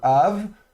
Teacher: Donc ici de nouveau le bê fricatif parce qu'il est précédé du kamets.